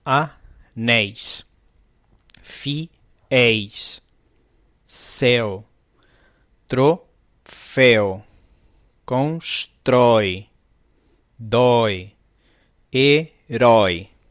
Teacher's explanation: a vogal mais forte sempre é aberta, sempre são tônicos, sempre estão na última sílaba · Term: ditongo aberto